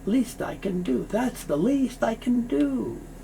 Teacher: The T moves over, so you hear least I can do.